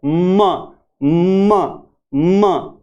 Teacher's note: हम म को जब बोलते हैं, एम को जब बोलते हैं तो दोनों होठ काम आते हैं, म। और इसमें जो बोलने का स्थान है वो है नेजल यानी नाक की सहायता से बोलते हैं, म। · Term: बाइलेबियल